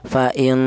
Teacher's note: Ghunah itu artinya ada suara berdengung. Panjangnya berapa dengung? yaitu dua harakat atau dua ketukan